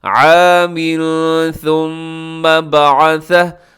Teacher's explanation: عامن کے نیچے تنوین ہے، تنوین کے بعد ثا کریے گا یہاں پہ اخفا